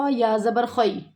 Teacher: خ یا زبر خی، حروف لین ہے، خے کی آواز یہاں پہ نہیں آنی چاہیے